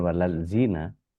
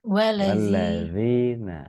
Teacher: Walladzi kan ada tasjid jadi wal nyangkut di lamnya.